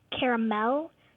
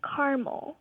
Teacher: Dad pronounces it with three syllables and she pronounces it with two